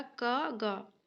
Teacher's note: क पहला वर्ण है, ग जो है तीसरा वर्ण है, और दोनों क्या है? अल्प प्राण है